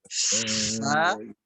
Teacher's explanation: fa itu harus ada nafas keluar, di bibir bawah ditekan oleh gigi atas. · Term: huruf fa